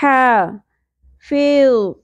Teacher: وسط حلق سے ادا ہوگا, یہ ہے حلوہ اردو میں ہے, عربک میں یہ اس طرح پڑھی جائے گی, ہلکی سی سانس کی آواز کے ساتھ حلق کے بالکل سینٹر سے